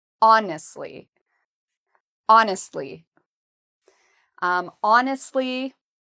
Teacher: we pronounce honestly by putting the stress on the first syllable